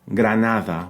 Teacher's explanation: the first D is the softer, the fricative D, right? Granada, which is pronounced like the TH in English.